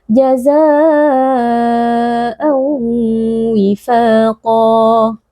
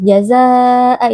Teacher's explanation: Jazaa'a itu merupakan satu kata sehingga di sini berlaku mad wajib muttasil yang kita baca 4 atau 5 harakat